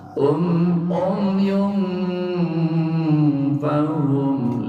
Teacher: Ikhfa artinya samar-samar, tidak jelas. Pengucapan tanwinnya adalah antara eng dan en, ya. Dengung tidak terdengung juga tidak izhar.